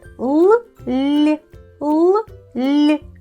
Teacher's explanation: Щоб вимовити ль, потрібно більше напружити язик і підняти його ближче до піднідіння.